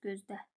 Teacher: Bu məqamda tələffüzdə təbii ki, l samiti yoxdur. Çünki l d-ya keçir.